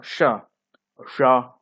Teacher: कुछ घर्षण होता है जीभ और तालू से, तालू के अंदर से, तालू का जो बाहरी हिस्सा होता है उसमें कुछ घर्षण हुआ। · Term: ऊष्म व्यंजन